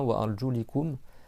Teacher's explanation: selon la récitation où tu mets une kasra, le son i à la fin